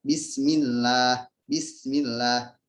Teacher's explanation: kata Allah ini dibaca tarkik ya, tipis karena di sebelumnya ada harokat kasrah. Jadi tidak tebal.